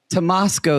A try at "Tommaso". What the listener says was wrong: I think you mean Tomaso. You said Tomasco like Tabasco. So you were wrong. You've never seen Tommaso, which is Italian for Thomas?